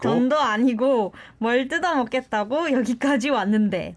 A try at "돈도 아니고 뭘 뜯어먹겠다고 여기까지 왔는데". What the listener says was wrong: Yeah, you said it very syllable by syllable. Good practice.